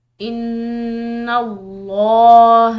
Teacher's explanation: نون مشدد ہے تو غنہ کریں گے